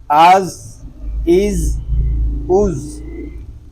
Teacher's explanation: زا کے سکون کو ہم ہلائیں گے نہیں، جنبش نہیں کریں گے، اس کو سکون کے ساتھ ادا کریں گے۔